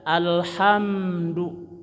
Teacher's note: mimnya dirapatkan ya satu huruf saja alhamdu ya du monyongkan tapi tidak panjang jangan menang monyong tapi